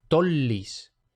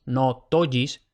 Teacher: Dos L's no se pronuncia como en español. No sería tollis, sino que se pronuncia una L doble.